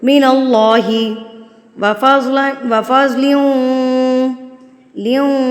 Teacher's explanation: 2 زیر کو آپ واو سے ملا رہے ہیں, یہ ہم کر رہے ہیں ادغام. · جب آپ نے اللہ کو پر کر کے پڑھنا ہے تو ایک تو آپ کے ہونٹ تھوڑے سے گلائی میں ہو جائیں گے, گول نہیں ہوں گے, گلائی کی طرف جائیں گے. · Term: ادغام مع الغنہ